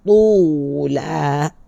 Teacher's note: tu huruf isti'la dan juga dia adalah itba'. Tu sangat tebal. Tula. Ya, tetapi bacaannya sebab dia baris di depan yang kedua tebalnya, okey.